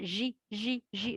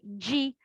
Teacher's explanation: Ensuite, il y a la lettre jim, jim. Donc, en arabe, la lettre jim, phonétiquement, il y a une petite dalle avant le J.